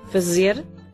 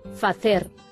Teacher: A pronuncia portuguesa é sibilante sonora.